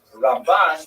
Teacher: Ramban is pronounced with the emphasis on the second syllable